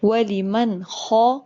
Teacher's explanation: نون ساکن کے بعد خو آ رہا ہے، حروف حلقی میں سے خو ہے، نون کی آواز ظاہر ہو کر جائے گی